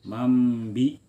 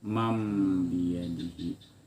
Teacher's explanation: Huruf nun bunyinya nun dibalik, arti iqlab tuh dibalik menjadi mim, maka bunyinya mam jadi mim.